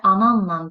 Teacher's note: Səs dəyişimi l samitimiz dəyişdi n samitinə, bir də əlavə n samiti əlavə oldu.